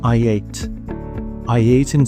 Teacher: between I and ate I'm inserting the sound Y